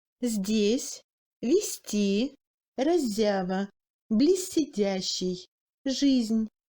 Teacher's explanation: le Z s'amollit devant les consonnes molles. D, T, Z, S, Н. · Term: assimilation